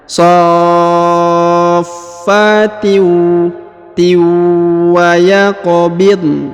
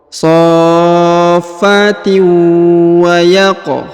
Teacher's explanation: tanwin bertemu wau ya maka didengungkan ditahan dan ditekan kemudian tanwinnya melebur hilang ke huruf wau